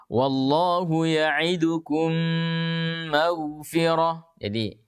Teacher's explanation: idgham ya contoh yang ada di buku seperti kita membaca [Musik] mim sudah langsung melebur ke dalam mim yang kedua jadi bibir langsung rapat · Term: idgham mimi